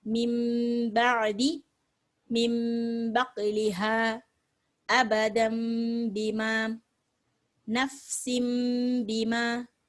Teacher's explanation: இந்த நூனை மீமா மாத்தி பாவோட இணைச்சு ஓத போறோம் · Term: இக்லாப்